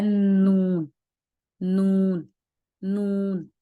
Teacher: جب زبان کا کنارہ ثنایا یعنی ثنایا 2 اور رباعی 4 کو کہتے ہیں، یعنی ہماری زبان کا جو کنارہ ہے وہ ہمارے جو اوپر کے دانت ہیں وہاں پر جا کر اوپر کے سامنے کے جو 4 دانت ہیں ان کے جڑوں اور مسوڑوں کی طرف جا کر لگتا ہے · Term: نون کا مخرج